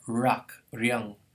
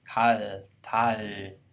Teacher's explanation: It's more like a r in onset position, more like the English l in a coda position. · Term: allophones of the same phoneme